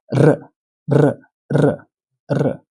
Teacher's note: ये एक Spanish word है बट इसका साउंड काफी हद तक रशियन आर जैसा है। Russian आर is rolled आर। इसे पाने के लिए आपको माउथ में एक ड्रिल चलानी होगी।